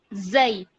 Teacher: یہ زا جو ہے ہم سختی سے ادا کریں گے, لیکن جیسے ہی ہم لین کی طرف جائیں گے تو ہم نرمی سے ادا کریں گے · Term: حروف لین